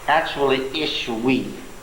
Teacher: Pronouncing this as a V is the product of Jews being in Germany for too long.